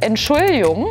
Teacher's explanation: hier muss das G auf jeden Fall verjottisiert werden